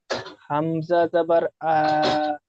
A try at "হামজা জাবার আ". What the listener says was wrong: আ টান হবে না, হামজা জাবার আ, হারাকাতে টান হয় না। জাবার আ বলে টান দিচ্ছেন, আ টান হবে না, হামজা জাবার আ।